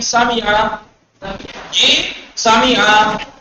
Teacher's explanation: معنی مثلا مثال کے طور پر آپ دیکھیے کیا ہے یہ، کہیں پر قرآن آیا سامعہ تو نہ تو سین کو کھینچنا ہے نہ میم کی حرکت کو کھینچنا ہے